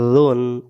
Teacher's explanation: জাল অক্ষরটাকে জিহ্বার আগা থেকে নরম করে পড়তে হবে